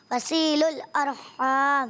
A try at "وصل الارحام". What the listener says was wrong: وصی نہیں کریں آپ، وصیل ال، وصیل ال، وصیل ال، اس طرح وصیل الارحام.